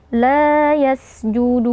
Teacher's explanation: huruf Sin yang sukun kita perhatikan harus kita keluarkan nafas dan juga suara